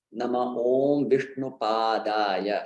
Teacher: devotees skip the first pa, which is long